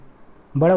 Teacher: ये दीर्घ है, ओष्ठ से बोला जाता है, पश्च स्वर है जबकि समवृत है।